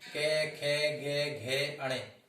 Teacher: के जो वर्ग होते हैं, के वर्ग जो बोले जाते हैं वो कंठ से बोले जाते हैं